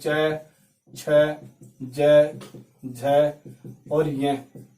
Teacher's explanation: तालु से निकलते हैं। इन्हें कहता है तालव्य।